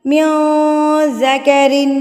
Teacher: من الصالحات من ذکر، میوں پہ اکفا، کیونکہ نون ساکن کے بعد حروف اکفا میں سے ذال آ گیا تو یہاں پر نون کی آواز کو آپ ناک میں چھپا لیں گے